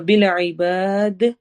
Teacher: با کو لمبا کریں گے اور دال پہ قلقلہ کریں گے